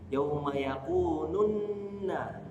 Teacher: Nunnya langsung masuk ke nun setelahnya.